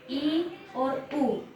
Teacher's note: इसका मतलब होता है मुंह बहुत ही कम खुलना। जब हम इनका उच्चारण करते हैं तो मुंह बहुत ही कम खुलता है। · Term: संवृत स्वर